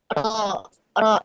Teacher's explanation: punggung ujung lisan didekatkan dengan langit-langit dekat gigi seri atas